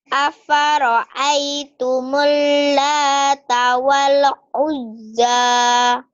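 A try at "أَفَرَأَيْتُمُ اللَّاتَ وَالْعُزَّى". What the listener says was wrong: wale jangan wale. Ayo nggak boleh wale.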